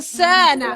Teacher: Artinya dalam in ada persediaan untuk sebut sin. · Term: ikhfa